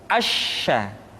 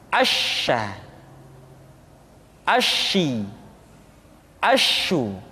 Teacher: Sya dikeluarkan dengan cara mengangkat tengah lidah kita ke langit-langit. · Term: sifat at-tafashi